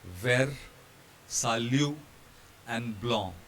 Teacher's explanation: Now this is unique in French. Consonants at the end of the word have a very special feature. They are not pronounced, they are ignored.